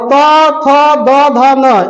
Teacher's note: त थ द ध न इनका उच्चारण किससे होगा जी तो इनका उच्चारण दंत से होगा